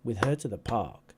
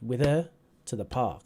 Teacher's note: Right, with is not stressed